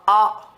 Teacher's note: पीछे की ओर से बोल रहा है, जिह्वा के भीतर की ओर से बोल रहा है, इसलिए इसको पश्च स्वर कहते हैं।